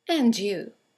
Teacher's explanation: And you is a statement. It has a falling intonation, and it's used to return the compliment or the greeting.